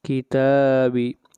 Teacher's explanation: یہاں پر تا کو لمبا کریں گے ایک الف کے برابر، یہ مد اصلی ہے